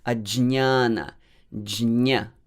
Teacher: Actually, it's, as you see how it's transliterated, it is j and ny with that wavy line, which is called tilde. So many Sanskritists, many scholars, pandits, they pronounce it fully, j and ny together.